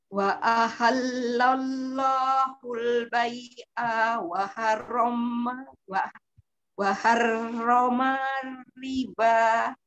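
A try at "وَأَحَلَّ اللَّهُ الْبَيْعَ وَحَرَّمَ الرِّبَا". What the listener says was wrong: Ya, masih sama, haknya keseret.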